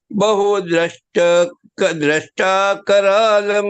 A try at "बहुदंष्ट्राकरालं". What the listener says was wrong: Bahudamstrakaralam. Dam. The im is there at the top, no? Bahudaram Bahudamstrakaralam. Damstra. दम, दा ऊपर एक डॉट है ना, दम। दंष्ट्रा करालम, नॉट दृष्टा, दंष्ट्रा।